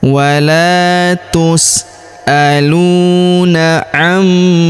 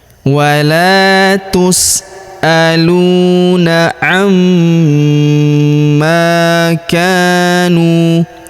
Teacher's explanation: Huruf lu kita panjangkan dua harakat karena wau sukun di depannya.